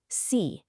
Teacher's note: You're creating a little hissing sound as air flows through a narrow channel. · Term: fricative